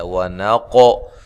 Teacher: والجو جو و مدہ ہے، عین کو واضح نکالنا ہے، ونقو قاف کو موٹا ادا کرنا ہے، قلقلہ کرنا ہے